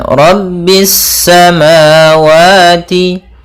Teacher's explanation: Pada bacaan Rabbis samawati, di sini ada alif lam syamsiyah, yaitu alif lam yang tertulis tapi tidak dibaca sehingga langsung kepada huruf sin yang bertasydid